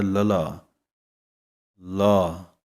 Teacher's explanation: ਜੀਭ ਨੂੰ ਪੁੱਠੀ ਕਰਨਾ ਵੀ ਕਹਿੰਦੇ ਹਨ ਜੀਭ ਪੁੱਠੀ ਹੋ ਜਾਂਦੀ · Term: ਲੇ ਪੈਰ ਬਿੰਦੀ